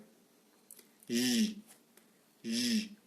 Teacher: Orale, fricative, palatale, et sonore.